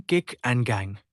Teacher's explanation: Produced by raising the back of the tongue to the soft palate, velum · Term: velar